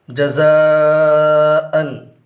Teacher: مد متصل کو 2 یا 2.5 یا 4 الف کے برابر کھینچ کر پڑھیں گے۔